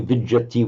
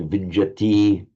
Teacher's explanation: in normal prose, this would be vijati with a short I. But in poetry, vijati, for the sake of the meter.